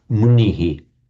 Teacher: the shadow vowel reflects the vowel before it